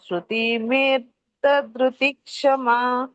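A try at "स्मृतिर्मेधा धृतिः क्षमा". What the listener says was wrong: ಹಾಗಾಗಿ ತಿ ಆದಮೇಲೆ ರ ಹೇಳಬೇಕು ಸ್ಮೃತಿರ್ ಮೇಧ ದೃತಿಕ್ಷಮ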